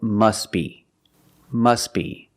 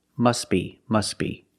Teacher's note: If you have two words together and you're linking the words, which we do, the T is also silent.